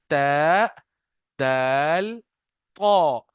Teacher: tip of द tongue touches द back side of द upper teeth